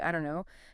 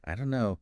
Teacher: the don't and know just merge